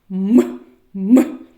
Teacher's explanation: м приголосний звук перешкода губи не співається